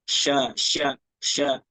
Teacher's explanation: Dia memiliki udaranya menyebar di rongga mulut itu sifatnya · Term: attafasi